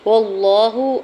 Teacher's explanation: اللہ کے نام سے پہلے زبر ہے، اللہ کے نام کو پر پڑھیں گے، ہا کی پیش کو بغیر کھینچے ہوئے ادا کرنا ہے، اوپر کھڑی زبر دو حرکت کھینچ کے بھی ادا کریں گے۔